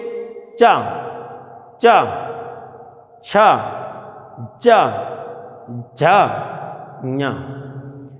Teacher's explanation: जीभ का बीच वाला हिस्सा तलुआ में चिपकता है जाके, इसलिए इसे तालु श्रेणी कहते हैं, क्योंकि ये तलुआ से चिपक करके उच्चारित होती है।